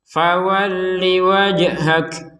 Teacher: jim sukun, maka kita pantulkan.